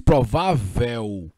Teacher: foneticamente isso aqui é um ditongo quando você disse provável você diz dois sons vocálicos